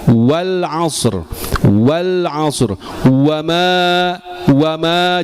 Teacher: ketika ada huruf wau berharakat, hurufnya dulu kita ucapkan u kemudian wa